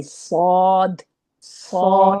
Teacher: الف با تا سا جیم حا خا دال زال را ز سین شین صاد. نہیں، واو کی آواز نہیں آئے گی، الف کی آواز آئے گی